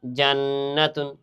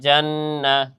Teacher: এখানে কেন গুণনা করলাম, এখানে নুনের উপর কি আছে, তাসদিদ আছে। নুনের উপর তাসদিদ থাকার কারণে কি করতে হবে, এখানে গুণনা করা ওয়াজিব, গুণনা করে পড়তে হইবে